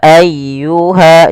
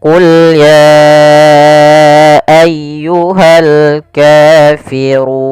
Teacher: Kemudian pelafal ayyuhal kafirun ditekan ya-nya.